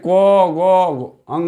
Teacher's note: कम हवा वर्ण क्योंकि जिन वर्णों का उच्चारण करने में मुंह से कम आवाज़ निकलता है, कम हवा मतलब मुंह से कम हवा निकलता है, उसको हम लोग बोलते हैं अल्प प्राण